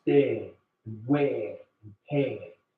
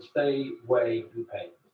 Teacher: he elongates the diphthong A